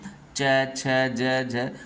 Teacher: आप बोलिए च छ ज झ, जो हमारा जीभ है वो हमारे तालु में ऊपर, ठीक है, वो उसमें टच होगा, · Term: तालव्य